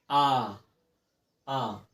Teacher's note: तो हमारा जिनमें क्या हो, मुख जो है पूरी अच्छी तरीके से खुल जाए, उन्हें हम क्या कहेंगे, संवृत्तित स्वर कहते हैं। जैसे आ बोलिए, आ, मुंह पूरा खुल जा रहा है ना, तो उन्हें क्या कहेंगे, वितरित स्वर।